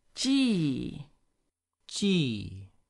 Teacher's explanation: the fourth is falling. Don't forget all the way down.